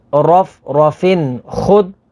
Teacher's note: یہاں پر ناظرین تنوین کے بعد خا ہے، خا حروف حلقی میں سے ہے تو یہاں پر اظہار ہوگا یعنی غنہ نہیں کریں گے۔